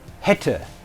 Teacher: We have a short E as in bist. A mid-low front vowel Ä as in hätte